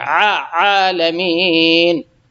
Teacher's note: عین ہے، عالمین، یہ عین ہے، کھڑا زبر ہے، تھوڑا سا کھینچیں گے بس ایک الف کے بقدر، تو اور اس کو عین کو اپنے اس کے صحیح جگہ سے، یعنی درمیان حلق سے نکالیں گے · کھڑا زبر ہے، تھوڑا سا کھینچیں گے بس ایک الف کے بقدر، تو اور اس کو عین کو اپنے اس کے صحیح جگہ سے، یعنی درمیان حلق سے نکالیں گے، عالمین، الحمدللہ رب العالمین۔